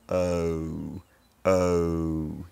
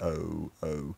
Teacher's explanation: And in the goat diphthong, for a lot of London speakers, it starts off unrounded, with the lips unrounded, and they become rounded as the diphthong goes along